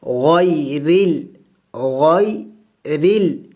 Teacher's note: ہم را کو باریک پڑھیں گے